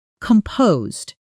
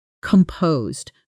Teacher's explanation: Composed is not pronounced with a hard s sound in the middle. It's composed with a soft Z sound and the stress falls on the second syllable.